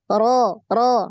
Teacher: naik pangkal lidahnya maka dia tebal terdengar ya